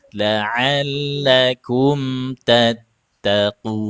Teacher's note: Ainnya sempitkan lagi tenggorokannya.